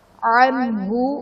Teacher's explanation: نون ساکن کے بعد حروف حلقی میں سے ہا ہے تو یہاں پر اظہار کا قاعدہ ہوگا، انہیں غنہ نہیں کریں گے